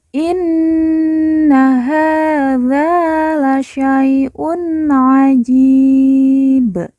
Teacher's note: dza juga kita baca panjang dua harakat karena di depannya terdapat huruf alif